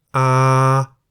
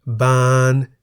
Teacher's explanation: A live syllable beginning with a middle class consonant is also in the middle tone.